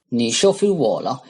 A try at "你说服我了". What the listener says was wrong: With the 你说服我了, he kind of said 你收服我了. So he kind of he reversed the O and the U. So 说 说, right? He kind of said 你收服我了. And the problem with that is that 收 is actually a pronunciation in Chinese.